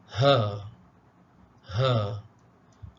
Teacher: Baik, seterusnya makhraj yang ketiga di bawah, halqum yang di bawah, hurufnya yang kelima ialah ha